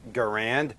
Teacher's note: where the R kind of rolled into the middle or the first syllable there kind of rhymes with the word 'errand'